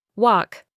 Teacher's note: The L in walk is silent.